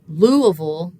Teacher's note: So in in English in particular, it's really common for us to take multi-llable words like Louisville and sort of um centralize or reduce in some ways people say uh some of the vowels that don't have the stress. So in a word like Louisville, the punch is on that first syllable. We'd call that the stressed syllable. The other two are not stressed.